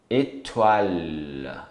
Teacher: Esse L fica um pouquinho mais longo, ele toca o céu da boca também.